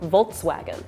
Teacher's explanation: And the V sounds like a W to me.